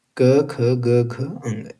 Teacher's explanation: तो क वर्ग का उच्चारण स्थान क्या है? कंठव्य थ्रोट।